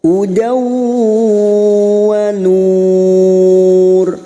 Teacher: Hudaw fathatain, fathah tanwin bertemu waw, idgham bi gunnah, siap masuk dan mendengung masuk pada huruf berikutnya yaitu huruf waw